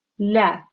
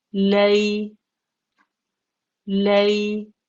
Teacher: la becomes lay when there's a ya leen straight afterwards